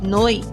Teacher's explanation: Na primeira sílaba, noi, nós encontramos uma vogal, O, e uma semivogal, I. Essas duas formam um ditongo.